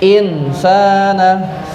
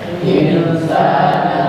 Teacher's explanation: Ikfa artinya adalah sa samar samar ee kaf. Maka cara membacanya adalah disamarkan dan didengungkan. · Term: ikhfa